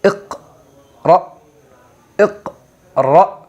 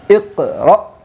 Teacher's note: اقرأ، اقرأ، حمزہ قاف زیر اقرأ، حمزہ زبر را، حمزہ ساکنہ کے پڑھنے میں جھٹکا ہوتا ہے